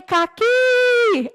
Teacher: eu vou perceber que a sílaba mais forte é o que.